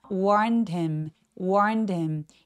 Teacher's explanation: 자, 이 warned 같은 경우에는 warn, N 소리가 성대가 울리는 소리라서 ED는 통째로 그냥 드로 발음합니다. warned him 해서 warned him처럼 연결해서 발음해 주시거나 혹은 대명사의 H 발음들은 잘 발음을 안 하는 원어민들도 많기 때문에 warned him처럼 H 없이 바로 연음해 주셔도 좋아요.